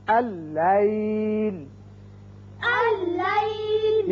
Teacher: یہ دیکھیے پہلا لام لکھا تو گیا لیکن پڑھا نہیں جائے گا. یہ حمزہ بشکل الف اس لام سے تشدید کے ساتھ ملے گا